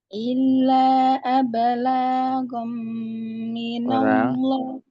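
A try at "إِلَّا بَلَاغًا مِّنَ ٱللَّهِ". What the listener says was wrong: La enggak panjang Bu. La enggak panjang. La enggak panjang. Ulang.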